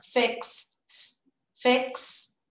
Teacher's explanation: Então, não tem o E, não tem o D, vira tudo som de T.